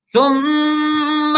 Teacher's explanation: ثم میم کے اوپر تشدید تو غنہ کریں گے